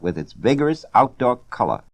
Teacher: he had that classic mid-Atlantic accent with the slightly dropped R sounds